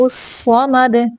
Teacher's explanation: الصمد مد، دال کو کلکلا کریں گے ساکن کرتے ہوئے